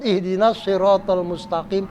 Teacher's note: sirotol itu pakai Alif itu Mad Thobi'i panjangnya satu Alif atau dua harokat